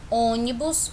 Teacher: a sílaba tônica é a antepenúltima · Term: proparoxítonas